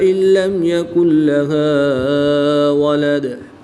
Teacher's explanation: نون ساکن کے بعد لام حروف یرملون میں سے ہے تو یہاں پر ادغام بلا غنہ ہوگا، غنہ نہیں کریں گے۔